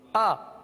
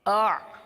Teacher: حمزہ سخت ہے, حمزہ سختی کے ساتھ ادا ہوتا ہے, جیسے آ. حمزہ کے اندر سختی ہے, آ. اور عین کے اندر نرمی ہے آ، تو ان دونوں میں بہت فرق ہے.